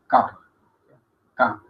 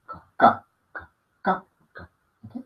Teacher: Esta K es velar, oclusiva, sorda, no soplada.